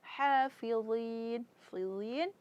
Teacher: Sedangkan hafidin itu keluar dari pangkal tenggerokan. Mereka ee ha dan ha mempunyai makhraj huruf tempat keluar hurufnya yang berbeda.